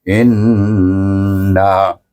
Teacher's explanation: Hamzah bertemu dengan nun bertasydid, kita wajib membaca dengan gunnah, iaitu wajibul gunnah dua harakat.